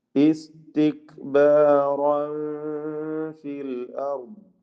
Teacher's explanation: ഇസ്തിക്ബാറൻ തൻവീനിനെ പൂർണ്ണമായി ശ്രദ്ധിച്ച് അതോടെ അവ്യക്തമാക്കി ഇഖ്ഫാ ചെയ്ത് ഉച്ചരിക്കേണ്ടതാണ്. ഇഖ്ഫാ ഹഖീഖി അവ്യക്തമാക്കി മണിക്കണം.